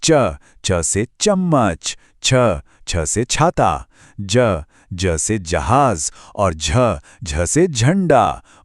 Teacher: यह है च वर्ग। इन अक्षरों को बोलते समय हमारी जीभ मुंह के ऊपरी हिस्से यानी तालू को छूती है।